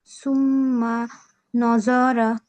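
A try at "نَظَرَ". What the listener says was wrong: ন হবে না আপু নুন জবর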